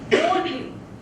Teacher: Lone is louder than the ly, so it is stressed. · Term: trochee